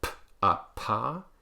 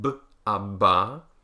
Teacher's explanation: the voiceless ones, p, t, and k, are all aspirated, meaning that there's a big puff of air that comes out